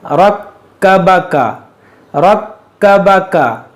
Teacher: बा ज़बर बा, रक्कबा, काफ ज़बर का, रक्कबका, रक्कबका। ये रा को मोटा करेंगे और काफ जो है मुशद्दद है, इसको 2 बार पढ़ेंगे।